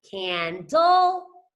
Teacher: it basically makes the short U sound, and you barely even open your mouth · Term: schwa